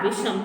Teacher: यदि शा से पहले आ या आ से भिन्न कोई स्वर आ जाए तो शा का शा हो जाता है, अर्थात दंत शा का मूर्धन्य शा हो जाता है। जैसे विधनशम, तो हो जाएगा विषम, मूर्धन्य शा।